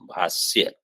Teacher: मूर्धन्य शकार नहीं, दंत्य सकार, भाष्य। लेकिन अहंकार बुद्धि ये जो है प्रमाता के द्वारा भाष्य नहीं है।